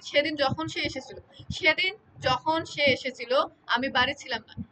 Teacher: সেদিনে সে এর উপরে ঝোক আর আমির উপরে আ এর উপরে ঝোক পড়তেছে আমি আ এর উপরে ঝোক পড়তেছে মানে সাধারণত এখানে একটা বিষয় আছে বাক্য বাক্যের শুরুতে বা শব্দের শুরুতে যে বর্ণটি থাকে সে বর্ণটিটা হচ্ছে বেশি জোর পড়ে। · এখানে সেদিনের সের উপরে ঝোঁক আর আমির উপরে আয়ের উপরে ঝোঁক পড়তেছে